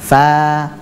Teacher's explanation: di bibir bawah bagian dalam bertemu dengan ujung gigi seri atas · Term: makhrajnya huruf fa